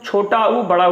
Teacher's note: जब हम छोटा ऊ, बड़ा ऊ बोल रहे हैं, ऊ, तो हमारे ओंठ पर प्रभाव पड़ रहा है। तो ये ध्वनि निकालने के लिए मुझे ओंठ का उपयोग करना पड़ा, इसलिए इन्हें ओष्ठांग या ओष्ठ बोलते हैं।